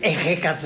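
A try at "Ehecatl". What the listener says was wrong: Pues si no es inglés, ¿de dónde sacan darle sonido de J a la H?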